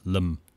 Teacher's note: There's no sort of y sound or like the more palatal L sound.